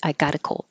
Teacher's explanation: I should have written this like gotta because the T changes to a d